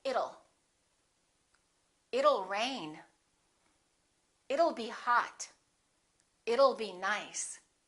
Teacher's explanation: let's change that T into a fast D and say it'll